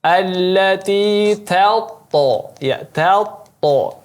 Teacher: Huruf ta-nya tetap dibaca tipis kemudian baru dipindahkan ke huruf to dengan menekannya karena ada tasydid.